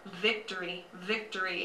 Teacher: you touch your top teeth to your bottom lip and you say victory. In Spanish, the B and the V sound a lot alike, and it's kind of halfway between a B and a V.